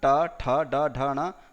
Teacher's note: ट वर्ग मतलब ट ठ ड ढ ण रकार शकार का उच्चारण स्थान क्या होता है मूर्धा होता है